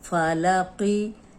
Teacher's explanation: فا اور لام کو لمبا نہیں کرنا، صرف قوف موٹا ہوگا